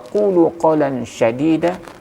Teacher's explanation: huruf shin itu sifat yang paling menonjol itu adalah tafashi. Beda dengan huruf sin.